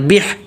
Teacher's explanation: با زیر بی ہے نا تو اس کو زیر کو ہا سے ملانا ہے